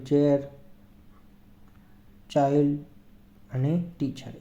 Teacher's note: આ ચ જ્યારે આ ઉચ્ચાર કરીએ છીએ ત્યારે શું અઘોષ એટલે કે એનું કંપન થતું નથી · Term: વોઈસલેસ સાઉન્ડસ, વોઇસલેસ સાઉન્ડ્સ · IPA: /tʃ/